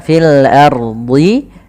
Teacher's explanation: Karena ro-nya sebelumnya adalah huruf fathah. Ro sukun sebelumnya fathah maka dibaca tebal. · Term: ro tebal